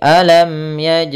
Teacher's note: ada mim mati harus dibaca dengan jelas tidak boleh ditahan